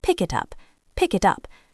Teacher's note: The K sound at the end of pick moves to the beginning of it. The T sound at the end of it moves to the beginning of up. It sounds like one word with three syllables. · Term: consonant to vowel linking